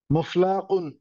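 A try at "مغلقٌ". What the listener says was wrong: মুগ, গইন স্যার।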